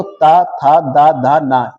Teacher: ये दंत व्यंजन दांतों से बोले जाएंगे।